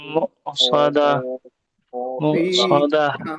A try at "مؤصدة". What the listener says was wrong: मुक़सदा कहते हुए आइन नहीं निकलना चाहिए मुक़सदा नहीं मुक़सदा हमजा है